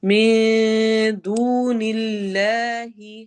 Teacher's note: من دون اللہ میں نون کے آواز کو چھپائیں